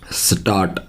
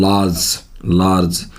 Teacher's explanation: लार्ज, लार्ज, मैंने कहा था पहले भी परसों वाली वीडियो के अंदर, वाक्य के बीच में वर्ड के बीच में O R यू आर I R में आर को प्रोनाउंस नहीं किया जाता, ठीक है। तो यहाँ पर आर का उच्चारण नहीं है, लार्ज होता है, लार्ज। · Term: आ की साउंड